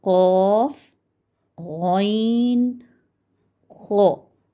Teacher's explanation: इसी तरह दूसरी कैटेगरी को हम देखें तो कम मोटी आवाज़ वाले हरूफ वो हैं कौफ, गौइन, खो। इन हरूफ की अदायगी में ज़बान सिर्फ जड़ से तालू की तरफ बुलंद होती है, जबकि दरमियाने तालू से ज़बान नीची रहती है